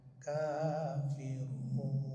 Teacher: ditonjolkan alifnya kan di sini enggak ada alifnya tuh enggak ditonjolkan tapi dia bacanya tetap harus dua harkat harus panjang maka si Alif tadi disimpan atau tidak ditonjolkan diganti dengan sakel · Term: panjang dua harkat